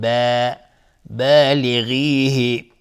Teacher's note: با از حروف استفاله و الف هم تابع با نازک تلفظ میشه